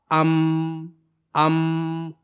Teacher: दोनों होठों के सूखे हिस्से को मिलाने से हरफ मीम की आवाज पैदा होती है। और फिर यह आवाज नाक के रास्ते से गुना की शक्ल में बाहर निकलती है।